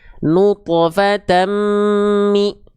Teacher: Fathatain ketemu mim, dileburkan disertai dengung selama 2 harokat. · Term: idgham bigunah